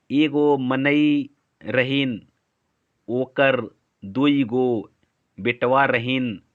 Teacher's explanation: ईकार बहुला मतलब ज्यादातर ई का प्रयोग, एगो मनई रहीन, ओकर, दुई गो, बेटवा रहीन, ऐसे जो होता है, तो ई का ज्यादा प्रयोग हो रहा है ना, वही है ईकार बहुला।